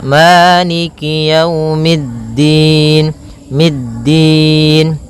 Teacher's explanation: Maka yaumiddin kemudian mid langsung ke da. Sifat dal yaitu posisi makhrajnya adalah di antara gusi atas dan gigi sari atas. Maka tempelkan ujung lidah kepada e di antara keduanya.